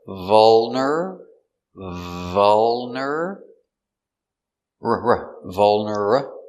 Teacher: this is a dark l so it goes in the back